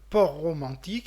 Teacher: nous avons ici une cacophonie directe du fait que les deux R se trouvent directement au niveau de l'interface entre les deux mots